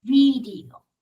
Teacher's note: Pero la V es, como me muerdo en los labios inferiores.